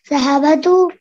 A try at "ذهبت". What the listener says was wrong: Are you saying zahabatu or zahabatu? No, zahabatu. It's not batu. It's ba. Okay, not ba. Zahab. Zahab. We have to pause there. We have to stop there. Zahab. Zahabatu.